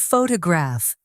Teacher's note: the word photograph, the stress is on the first syllable, ph to graph.